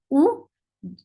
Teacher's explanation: U is for dhamma, circle your lips.